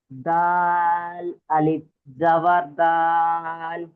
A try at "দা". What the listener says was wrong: দাল নয়, দাল আলিফ জাবার, বানান করার পরে কি হবে, দা হবে, দাল হবে কি, ওটা অক্ষর বলার সময় দাল হবে, কিন্তু বানানের ক্ষেত্রে দা হয়ে যাবে লাস্টে। দাল আলিফ জাবার দা।